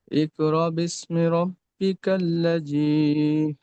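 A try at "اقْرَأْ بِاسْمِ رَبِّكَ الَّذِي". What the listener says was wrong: এখানে ঝাটকা দেন, ইকরা বলে থেমে যেতে হবে হঠাৎ।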